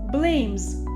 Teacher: we pronounce the ending s with the sound of Z